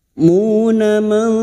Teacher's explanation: nun sukun bertemu ta ikfa hakiki, kita samarkan bunyi nun sukun dan mendengung selama 3 harakat.